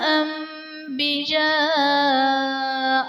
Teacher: نون ساکن کو میم سے بدل کر اخفا کریں گے، یعنی غنہ کر کے پڑھیں گے۔ یہاں پر اقلاب کا قاعدہ ہوگا۔